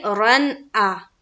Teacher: اظہار حلقی ہوگا کیونکہ 2 زبر کی تنوین کے بعد حمزہ آئی